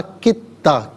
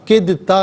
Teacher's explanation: دال کی آواز نہیں آئے گی، دال کا ساؤنڈ نہیں ہوگا، تا کا ساؤنڈ ہوگا